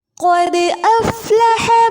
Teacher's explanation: قد افلح قاف پر اور دال پر قلقلہ ہوگا. افلح حا وسط حلق سے ادا ہوگا.